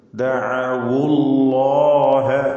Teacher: ലാമിനെ തടിപ്പിച്ച് തഫ്ഹീം ചെയ്ത് ഉച്ചരിക്കുക. തഫ്ഹീം ചെയ്യുമ്പോൾ ലാമിൻ്റെ മഖ്റജിൽ മാറ്റമില്ല, ഉത്ഭവസ്ഥാനം യാതൊരു മാറ്റവുമില്ല.